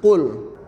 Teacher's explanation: Huruf qaf ini makharijul hurufnya di pangkal lidah sedikit ke belakang, sehingga melafalkannya qul.